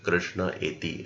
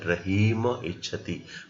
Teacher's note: Now the second rule says when any word ends in a and if that a is followed by visarga and if that visarga is followed by abhinna swaraha, any vowel other than a, then also this visarga is dropped